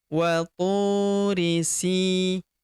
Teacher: Huruf si kita panjangkan 2 harokat karena terdapat ya sukun depannya yang ini. Wa turi sinin.